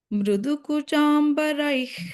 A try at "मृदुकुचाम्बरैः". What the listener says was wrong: Not mru. Not mru, Bhagini. Mru. Bha, rukara. Bhrudukuchambarai.